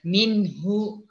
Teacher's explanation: H dengan hamzah, ia bahagian kerongkong tapi bahagian dalam di bawah. Itu beza. Jadi sebab tu kalau kita ni membaca huruf H, sebutan pada huruf H, macam seolah-olah kita ni tu macam mendengus.